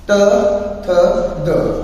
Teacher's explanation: ਦੰਦਾਂ ਦੇ ਅੰਦਰ ਇਧਰਲੇ ਪਾਸੇ ਭਾਵ ਉੱਪਰਲੇ ਪਠਾਰ ਤੋਂ ਦੰਦਾਂ ਦੇ ਵਾਲੇ ਪਾਸੇ ਜੋ ਧੁਨੀਆਂ ਟਕਰਾ ਕੇ ਪੈਦਾ ਹੁੰਦੀਆਂ ਨੇ